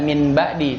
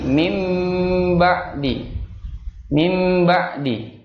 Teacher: nun yang ketika ketemu ba, maka dia bunyinya kan bukan min ya, tapi mim. Mim ba'di. Tidak dibaca min ba'di, tapi mim ba'di.